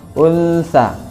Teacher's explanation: nun mati bertemu dengan huruf sa, maka dibaca samar 2 harokat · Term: ikhfa hakiki